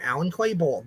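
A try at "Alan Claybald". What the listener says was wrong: With a D at the end. You say Alan Clayball.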